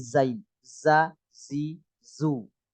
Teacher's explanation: seperti sa cuma ini bedanya Z kayak suara lebah